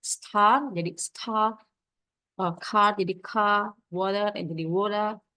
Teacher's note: Dialek seperti RP atau Recite Pronunciation and Cockney adalah contoh utama di mana bunyi R tidak lagi diucapkan. Contohnya dalam pengucapan seperti star jadi star, car jadi car, water jadi water. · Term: nonrotik, non-rhotic